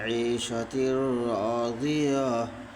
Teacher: دو زیر کی تنوین کو بلا گناہ ملا کر کے پڑھیں گے، اس کو ادغام تام بلا گناہ کہتے ہیں۔